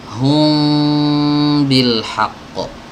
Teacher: furjah furjah itu celah sedikit ya Antara dua bibir Yadi diatas bibir bawah itu enggak rapat banget tapi kasih celah sedikit ada yang mengatakan celahnya itu seperti setipis kertas selembar kertas hubbil